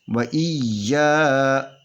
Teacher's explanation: یہ یا ڈبل پڑھی جائے گی اور اپنی مخرج میں سختی سے پڑھی جائے گی، اور یہ الف سے پہلے زبر ہے، اس الف کو 2 حرکت کے برابر کھینچ کر پڑھیں گے۔